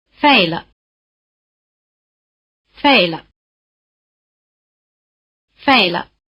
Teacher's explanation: After the falling tone, the pitch of the neutral tone is at the bottom. It's almost like a continuation of the falling tone.